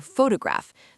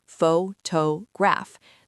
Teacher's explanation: The stress is on the first syllable, pho-to-graph.